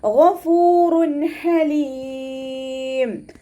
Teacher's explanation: ഗൈനിൻ്റെ മഖ്റജ് വരുന്നത് അദ്നൽ ഹൽക്കാണ്. തൊണ്ടയുടെ ആദ്യ ഭാഗം, നമ്മുടെ തൊണ്ട തുടങ്ങുന്ന ഭാഗത്തു നിന്നാണ് ഗൈന് പുറപ്പെടുന്നത്. അപ്പോൾ അതിൻ്റെ സൗണ്ടിനെ ക്ലിയർ ആക്കുക കേട്ടോ. · ഗൈന് പിന്നെ ഇസ്തിഅലാൻ്റെ ലെറ്റേഴ്സിൽ പെട്ടതുമാണ്. അപ്പോൾ നാവിൻ്റെ ബേക്ക് നന്നായിട്ട് മുകളിലേക്ക് പൊക്കി കൊടുത്തിട്ട് തഫ്രീൻ ചെയ്യുക. ഫ ലൈറ്റ് ആക്കിയിട്ട് ഉച്ചരിക്കുക.